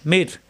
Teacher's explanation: এখানে তাসদিদ ধরে মিলিয়ে পড়তে হবে কোন গুন্না হবে না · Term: বেলা গুন্না